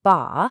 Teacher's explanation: With that high first tone, it can mean father. Change it to the falling fourth tone, ba, and now it means to stop.